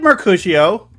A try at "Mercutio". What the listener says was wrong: It's Mercutio. You said Mar. You did.